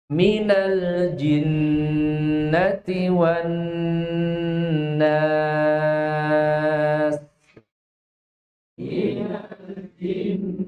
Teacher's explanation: Huruf jim tidak boleh keluar nafas. J enggak boleh.